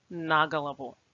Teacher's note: Also, as it often happens when a preposition and a noun are used together, they should be pronounced as one word, and it is the preposition that begins to carry the stress. So here, the stress falls on на, and it must be pronounced as на голову.